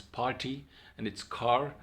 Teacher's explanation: So R is pronounced for American variety of English, and it is not pronounced for British variety of English.